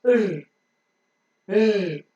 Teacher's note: The tip of the tongue is slightly rounded and it goes very, very close to the back of the teeth ridge. It may not touch or may just touch once.